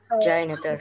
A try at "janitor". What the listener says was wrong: Bukan J, tapi pakai D. Janitor. Janitor. Janitor.